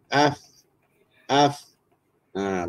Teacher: cara sebutan dia bibir bawah ditekan ke gigi kacip atas ya kalau kita matikan Alif AF AF AF nampak di perut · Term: suara Fa